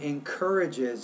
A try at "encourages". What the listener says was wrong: So you're kind of missing that syllable at the very end of that word.